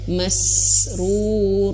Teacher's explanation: ketika huruf sin sukun itu harus ditahan dulu. Keluarkan anginnya dulu. Berikan hak-hak sifatnya.